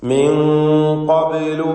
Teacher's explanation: ഖബ്ലു എന്നതിലെ ബാഹിന്റെ സുക്കൂൻ ഖൽഖല സുഗ്റ നൽകി ശബ്ദം ഹറക്കത്ത് പോലെ ചലിപ്പിക്കുക